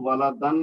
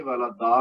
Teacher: پھر والدا میں یہاں پہ ہم رکیں گے تو والدن نہیں پڑھیں گے والدا پڑھیں گے، یہ الف مد کی طرح پڑھا جائے گا یعنی 2 حرکت تک کھینچ کر پڑھیں گے